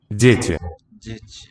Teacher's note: These two vowels there, the ye, ye, have the glide as part of it.